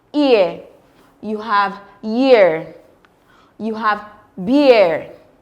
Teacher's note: This sound starts with the closed front vowel E and glides to the close midfront vowel uh.